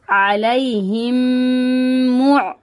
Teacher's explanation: मीम साकिन के बाद दूसरी मीम आ रही है, तो अब हम यहाँ पे गुन्ना करेंगे, इदगाम शफवी का गुन्ना होगा यहाँ पे।